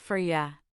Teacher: It's faster, more casual. The pronunciation changes. For you became for ya. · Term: connected speech